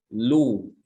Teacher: Kalau dia dhammah, lamnya dhammah disertai dengan memoncongnya bibir ya.